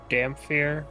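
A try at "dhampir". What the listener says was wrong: Damper. Damper. The H doesn't exist.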